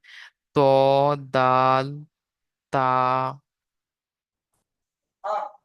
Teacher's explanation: জিভের আগা এবং সামনের উপরে দুই দাঁতের গোড়ার সাথে লাগিয়ে উচ্চারিত হয়। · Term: 11 নম্বর মাখরাজ